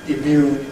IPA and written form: ɪˈmjuːn (immune)